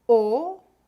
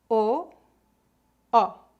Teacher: O O aberto leva este nome porque é pronunciado com a boca mais aberta e o O fechado com a boca mais fechada. Preste atenção aos meus lábios.